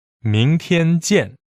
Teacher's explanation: 明 is second tone. 天 is first tone. And 见 is fourth tone.